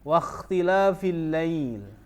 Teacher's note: al-lail ini mad layyin atau mad lin. Huruf fathah bertemu dengan ya sukun.